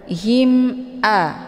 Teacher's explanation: cara bacanya mimnya dibunyikan secara jelas atau jelas bunyi m-nya cukup ditekan saja tidak perlu ditahan him ya Im a hukum bacaan izhar syafawi jelas tiada berdengung